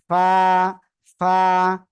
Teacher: নিচের ঠোঁটের পেট, সামনের উপরে 2 দাঁতের আগার সাথে লাগিয়ে হালকা বাতাস বের করে উচ্চারণ করে দিবেন।